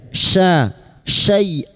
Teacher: huruf syin wastul lisan atau tengah lidah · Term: huruf shin